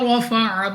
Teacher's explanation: रॉ पर जबर, तो रॉ को पुर यानी मोटा पढ़ेंगे